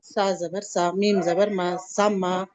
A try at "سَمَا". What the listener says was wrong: کھینچنا نہیں ہے ماں, می کو جلدی پڑھیں آپ, زبر ہے نا.